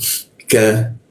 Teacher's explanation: Ika masuk ke ka, di siku tenggorokan lidah yang kita turunkan